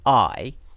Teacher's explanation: when this diphthong has no consonant at all after it it's just on its own i is pronounced long